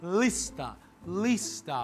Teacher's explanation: aquele Lzinho lá na ponta da língua